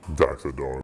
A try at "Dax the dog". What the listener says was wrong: It sounded like you said Dak.